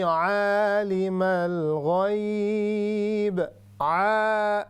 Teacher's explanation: standing फतहा, which means we have to stretch up to 3 seconds